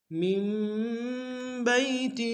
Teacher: بئی میں یا لین ہے بغیر کھینچے پڑیں گے، ہا کے نیچے کھڑی زیر ہے، ایک اندار میں کھینچیں گے۔